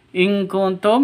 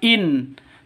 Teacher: nun mati bertemu dengan Kaf samar didengungkan siap-siap ke huruf kafnya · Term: ikhfa Hakiki